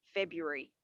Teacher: february or february but we're not going to say february no that first r is sort of removed